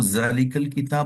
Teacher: जिसके अंदर ये वजाहत किया जा रहा है कि यहां पर इन्होंने जाल को जा की शक्ल इख्तियार करके उस अंदाज से उन्होंने पढ़ा है। इसके अंदर सिटी की आवाज आ गई।